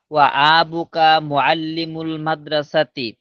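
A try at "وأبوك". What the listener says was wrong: ওয়া আবুকা, আবুকা বললে তো আয়ের মধ্যে টান হয়ে যায়, তো আয়ের মধ্যে টান নাই। ওয়া আবুকা, ওয়া আবুকা, ধরো তোমার নাম সাইদুল ইসলাম, হ্যাঁ, আর আমি যদি বলি সাইদুল, এই সাইদুল ইসলাম বলি, শুনতে কেমন অদ্ভুত শোনা যায় না? কিন্তু সাইদুল ইসলাম, আব্বা মাদ্রাসা শিক্ষক, ও আবুকা মুআল্লিমুল মাদ্রাসা।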